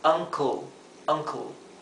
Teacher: Traten de evitar pronunciar la e porque este tipo de sonido en inglés la e se omite, sería co. Co, por lo tanto, esto sería uncle.